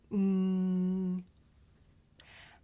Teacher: we make this sound towards the back of the mouth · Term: consonant sound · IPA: ŋ